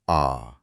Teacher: विवृत स्वर में पूरा मुंह खुलता है